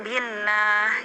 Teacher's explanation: Adapun bila sebelumnya berharokat kasroh, misalnya billah, ya berarti lamnya di situ Allahnya tipis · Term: tarkik